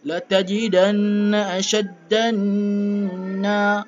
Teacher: Bila huruf dal masuk ke nun, temu dengan nun yang bersabdu, maka kena dengung.